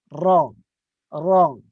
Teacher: Ra yang berbaris atas ini hukumnya tafkhim. Tebal.